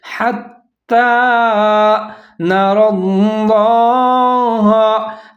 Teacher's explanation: تا کے اوپر تشدید مشدد ہے اور کھڑا زبر ہے، تو ہا اور تا دونوں ملا کے پڑھیں گے، مضبوطی کے ساتھ پڑھیں گے۔ حتی نری اللہ، نون کے اوپر زبر ہے، را کے اوپر زبر ہے، آگے لفظ اللہ، اس کو آپ نے موٹا کر کے پڑھنا ہے کیونکہ اس سے پہلے جو را ہے اس کو بھی موٹا پڑھنا ہے، اس کے اوپر زبر ہے۔